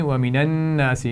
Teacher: وَمِنَ النَّاسِ نون پر غنہ ہے اور ناس الف مدہ ہے، کھینچ کر پڑھیں گے